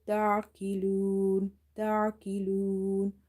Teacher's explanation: Ta ain fatha ta. Ain is from the middle of the throat. Sometimes what we do, in order to pronounce it from the middle of the throat, some students, they are pausing it, or they are giving it a sudden like a pause, like a ta.